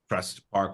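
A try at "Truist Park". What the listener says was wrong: Truist? There's an I in there.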